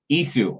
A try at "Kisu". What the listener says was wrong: No, Kisu. There's K. Like kick. Kisu.